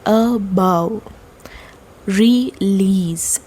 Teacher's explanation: So the first syllable will be unstressed and the second one is stressed.